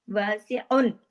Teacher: पूरा इजहार हो रहा है ना, कोई इसमें उन्ना शुन्ना नहीं हो रहा